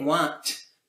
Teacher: So you can get want because you have a vowel leading into a nasal which has duration, which then allows you to go into the t sound from want.